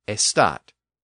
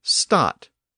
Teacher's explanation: some English speakers took that word estat and they dropped the A part at the beginning, and that produced the word stat